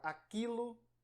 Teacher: Aliás, o U aí, ele não tem som nem vocálico, nem semivocálico. O U da palavra aquilo, ele não tem sonoridade alguma. Portanto, se ele não é semivogal, não pode existir um ditongo nessa palavra.